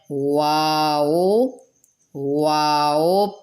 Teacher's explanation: اس کو پڑھتے وقت دونوں ہونٹوں کی گولائی ہوتی ہے، اور کسی حرف کو بھی ادا کرتے وقت دونوں ہونٹوں کی گولائی بالکل نہیں کریں گے۔